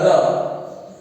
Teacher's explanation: जैसा इसका प्रकार का नाम है प्रकंपित, तो इसमें उच्चारण करते समय जिह्वा 2-3 बार कंपन करती है। और हिंदी वर्णमाला में र ऐसा व्यंजन है जिसके उच्चारण में जीभ 2-3 बार कंपन करती है